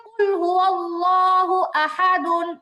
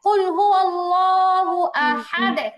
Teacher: যেমন যেমন হচ্ছে কুল হুয়াল্লাহু আহাদুন, ওয়াকফ করলে কি হবে, মাশাআল্লাহ, ওয়াকফ করলে হবে কুল হুয়াল্লাহু আহাদ, তাই তো, সাকিন হয়ে গেছে এবং কলকলা হয়েছে